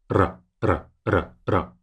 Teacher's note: when you roll your R's, you only have to vibrate your tongue to the top of your palate once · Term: roll our R's